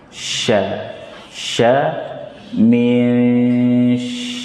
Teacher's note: Shin itu terdapat di tengah-tengah lidah bersama jim dan ya.